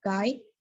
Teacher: articulated with the back part of the tongue or dorsum against the soft palate